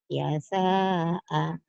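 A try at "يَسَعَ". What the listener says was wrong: Pendek semua.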